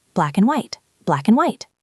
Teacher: This is perhaps the most common word in English, and we destroy it. We almost never say and. We say un, or sometimes just n.